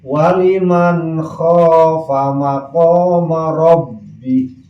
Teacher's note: Jadi lamun aya nun sukun atawa tanwin ngahareupan kha, maka nun sukun sareng tanwin macana wajib izhar suara n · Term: izhar halqi